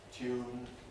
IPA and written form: tjuːn (tune)